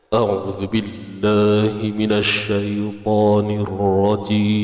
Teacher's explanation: Dipanggil suara qarar daripada bawah ni. Kan, bunyi tu bunyi tebal, bunyi pekat.